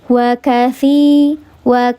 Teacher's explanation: karena ya nampak dibaca panjang dua harakat namanya mad thobi'i